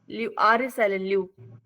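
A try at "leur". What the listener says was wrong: No, it's not साइलेंट, आर को पढ़ते हैं ना एंड में। मैंने बोला है आर को सिर्फ एक बार नहीं पढ़ते जब नॉट लुआर।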